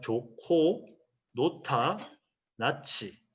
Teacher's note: 히읗이 기역, 니은, 비읍, 지읒과 합해서 거센 소리로 나는 경우